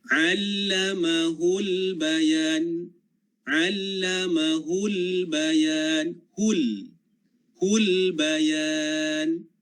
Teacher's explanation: Dia sebut hul, lam itu mati, maka pastikan hujung lidah kita berada pada gusi gigi atas hadapan.